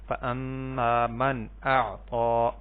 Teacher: نون ساکن کے بعد حمزہ ہے جو کہ حروف حلقی میں سے ہے، تو یہاں پہ بھی ہم نے اظہار کرنا ہے، واضح کر کے پڑھنا ہے۔